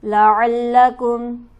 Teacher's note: لام کو تشدید کی وجہ سے سختی سے ذرا رک کر پڑھیں گے